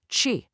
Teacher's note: And ch for to eat, it's not chi. Your tongue is kind of curled back.